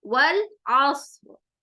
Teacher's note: سواد بھی موٹا ہوگا, عین حروف حلقی ہے